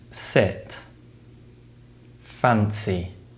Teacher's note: the S sound is produced by restricting air between the tongue and ridge of the mouth